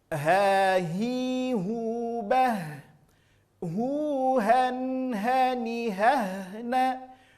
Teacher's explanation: Keluar dari aqsal halqi, keluar dari pangkal tenggorokan. Aqsa artinya pangkal, ya. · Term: huruf ha